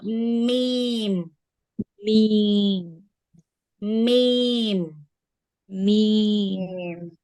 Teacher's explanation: மீம் எங்க அப்படின்னு பாத்தீங்கன்னா நம்மளுடைய இந்த உதடுகளினுடைய வெளிப்பகுதியில தொடக்கூடியது